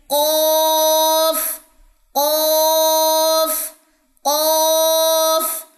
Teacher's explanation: یہ موٹا قاف ہے یعنی کہ اقصی لسان اوپر کی طرف اٹھے گی. زبان کی جڑ کو اقصی لسان کہتے ہیں.